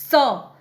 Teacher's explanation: स जब आप बोलते हैं तो क्या होता है, स बोलते समय आपका जीभ जो है वो दांत पे आकर के लगती है, तो ये क्या है, उच्चारण स्थान इसका क्या है, दंत है। स बोलने पे क्या होता है, जीभ जो है वो दांत को टच करती है